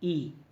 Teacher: ई जब बोलते हैं, जिसको हम लोग जनरली दीर्घी बोलते हैं, तो तालु से इसका उच्चारण किया जाता है।